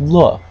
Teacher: it's a mode that's uh what we call lateral meaning that the tongue goes up to the alveolar Ridge but the air actually flows to the outsides of the tongue okay um slightly different than any of the other modes that